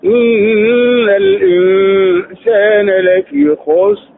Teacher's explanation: حرف الراء ساكن وسبق بساكن وسبق ضم نتلوه مفخم